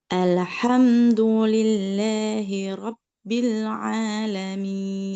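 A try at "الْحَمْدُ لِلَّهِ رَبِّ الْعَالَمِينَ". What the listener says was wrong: Iya, suaranya lebih dipelongin lagi supaya nggak banyak masuk hidung. Sama lamnya tadi kerasa mantul dikit. Kuncinya jangan dilepas lidahnya, bukan alhamdu.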